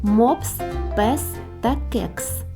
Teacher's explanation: с він приголосний твердий глухий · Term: звук с